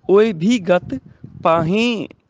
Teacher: ਨਾਸਕੀ ਉਚਾਰਨ ਆਏਗਾ ਹਾਹੇ ਨੂੰ ਬਿੰਦੀ ਲਾ ਕੇ